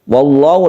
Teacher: lafaz Allah yang dibaca tebal karena sebelumnya ada fathah